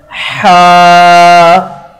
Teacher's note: ہا جو ہے یہ ہمارے حلق کا جو درمیان والا حصہ ہوتا ہے نا، یہ وہاں سے ادا ہوتا ہے